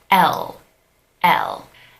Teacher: the English L is pronounced with the tip of your tongue touching your teeth